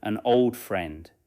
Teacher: In an old friend, the N moves naturally toward old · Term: Connected speech